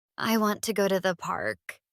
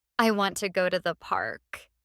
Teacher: The stress is on want and park.